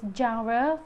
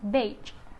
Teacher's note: The next sound is J. J is voiced alveopalatal fricative